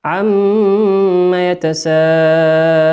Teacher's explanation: قلنا الميم في عم هي ميم مشددة مقدارها حركتين